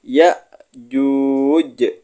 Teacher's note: Hamzah sukun cara membacanya seperti Berhenti sejenak